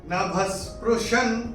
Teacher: भ के बाद विसर्ग के बाद का अक्षर है स, तो ये विसर्ग का उच्चारण होगा आधा स। नभस्पृशं ऐसे करके आएगा।